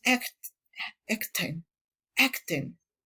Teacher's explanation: Tenemos la umlaut, tiene un sonido que se puede ubicar entre la A y la E, pero realmente es una E